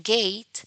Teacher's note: In velar sounds, like as in Kate, or g, as in gate, or the last consonant sound in the word sing or song, the sounds are produced by raising the back of the tongue towards the soft palate or the velum